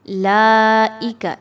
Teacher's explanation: لائک، لام پر آپ دیکھ سکتے ہیں کہ آپ کو مد نظر آ رہی ہوگی اور حمزہ بھی اگلا اسی کلمے میں موجود ہے، تو یہاں پر مد واجب متصل ہو رہی ہے اور یہاں پر اس کی حرکت کو 4 سے 5 الف کے برابر رکھتے ہوئے پڑھیں گے